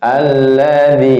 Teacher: alif lam tidak dibaca ya, langsung ke lam yang kedua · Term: idgham syamsiyah